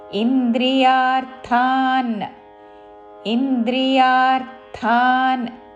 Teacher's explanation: మహాప్రాణాక్షము థాతో పొల్లునా కలిపి థాన్